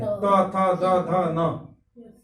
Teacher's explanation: देखिए सीधे सीधे जीभ जाके दांत में लड़ रही है